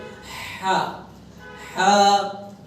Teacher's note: হা হচ্ছে কণ্ঠনালীর মধ্যখান থেকে চাপ দিয়ে শোষ আওয়াজ একটু বেরোবে